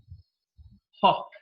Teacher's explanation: When the air passes through, there is no vibration in the vocal cords. The place of articulation is glottal. It's produced from the glottis · Then we got one more fricative, ha. Ha is a voiceless sound because the vocal cords are held apart from each other. When the air passes through, there is no vibration in the vocal cords.